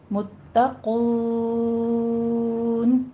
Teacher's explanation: یہاں پہ واو مدہ کے بعد ہم عارضی طور پہ وقف کر رہے ہیں، حرکت گرا رہے ہیں تو مد عارض وقفی پیدا ہوگی جس کو ہم نے 6 کاؤنٹ کرنا ہے